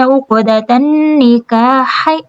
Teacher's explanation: یہاں پہ قاف پہ قلقلہ ہوگا